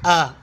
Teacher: حمزہ حلق کے نیچے والے حصے سے ادا ہوتا ہے